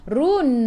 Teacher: Run, ra baca dengan tebal, ra baris depan sebelum huruf akhir ada waw yang tak ada baris ma'rib di sukun, boleh baca 2, 4 atau 6 harakat. Matikan dengan huruf nun, hujung lidah menyentuh gusi atas.